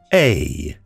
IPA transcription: eɪ